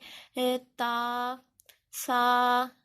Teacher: سا نکلتا ہے زبان کے جو سرا ہے اور اوپر والے دانتوں کا کنارہ ہے، اور تا نکلتا ہے زبان کی نوک اور اوپر والے دانتوں کی جڑ سے۔